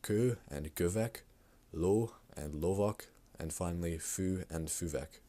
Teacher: the long ö, u, or o will also shorten to just simply ö, u, or o